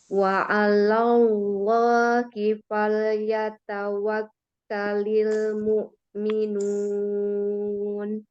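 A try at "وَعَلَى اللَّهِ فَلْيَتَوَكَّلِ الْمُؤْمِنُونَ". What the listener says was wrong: Lafaz jalalahnya tebal juga itu. Sama ya, itu tebal juga. Wa 'alallahi falyatawakkalil mu'minun.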